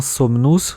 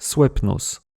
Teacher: Le mot latin somnus, sommeil, vient du proto-indo-européen swepnos. Ici, le N a en quelque sorte transféré sa propriété de consonne nasale au P, qui est devenu un M, simplement parce que ça demande un peu moins d'effort à prononcer. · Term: assimilation